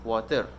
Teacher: is pronounced as water with a strong r at the end